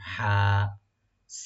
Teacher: open করে গলা মাঝখান থেকে আনার চেষ্টা করবেন